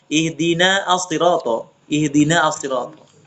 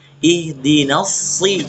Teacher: Kalau sambung satu ayat, maka alif lamnya tidak dibaca lagi. Nggak boleh kita baca ihdina as-sirata, ihdina as-sirata. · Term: hamzah wasl